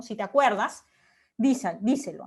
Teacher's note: Y digamos que las otras, el si, la te, la das, de alguna forma se apoyan en esta sílaba tónica cuer